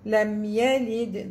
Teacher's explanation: The dal is مقلقل because it has a سكون on it. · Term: قلقلة